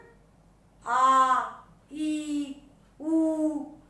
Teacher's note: इनको बोलने में ह्रस्व स्वर से दुगना समय लगता है ना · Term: दीर्घ स्वर